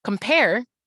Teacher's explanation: we can hear in the beginning that c-o-m is getting cut off for the p compare that air in the last syllable stretches out so that's